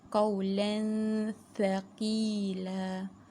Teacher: Makhraj dengung, kita masukkan qawlan thaqila, dengung disamarkan dan terus lidah kita terus masuk kepada makhraj tha di gigi atas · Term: ikhfa